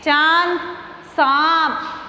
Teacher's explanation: उच्चारण गले व नाक दोनों से किया जाता है।